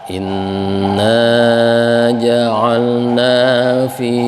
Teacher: ini ada gunnah, nun bertasydid, ditahan.